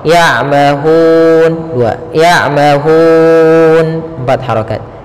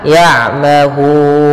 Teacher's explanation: kita panjangkan hu-nya, boleh 2 harokat, boleh 4 harokat, dan boleh pula 6 harokat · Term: mad arid bisukun